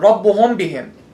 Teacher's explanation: By closing our lips on meme with a long gunna and then opening them with a ba. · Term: ikhfa shafawi